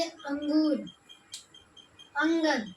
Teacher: अंगूर बोलने पे हवा सिर्फ नाक से निकल रही है, अंगूर, इसलिए इसे अनुस्वार कहते हैं।